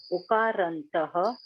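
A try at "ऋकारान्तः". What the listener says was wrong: say it Rukar. Properly you have to say. It is Rukarantaha. When you say R, When you say R, the lips should not be round.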